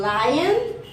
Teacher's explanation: For example, according to voicing, light L is voiced. Place of articulation is alveolar. Manner of articulation is lateral